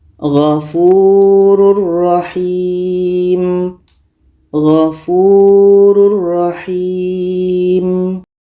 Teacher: ini ada tanwin bertemu ro ro adalah huruf idgham bila ghunah maka tanwin ini kita masukkan ke ro dan tidak boleh dengung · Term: idgham bila gunnah